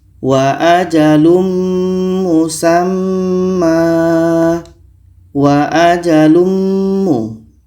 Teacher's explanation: ini ada tanwin bertemu mim mim adalah huruf Idam bunah maka tanwin ini kita masukkan ke mim dan kita baca dengung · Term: idgham bi gunnah